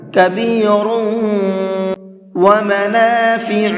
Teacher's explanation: یہاں پر غنہ کریں گے، اس لیے کہ را کے اوپر تنوین ہے اور تنوین کے بعد میں واو ہے۔ تنوین کے بعد میں کہیں پر بھی واو آتا ہے تو وہاں پر غنہ کرتے ہیں۔